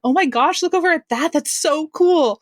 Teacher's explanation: their voice is going to be like a little bit higher they're going to be a little bit excited a little bit breathy and all their words are really really fast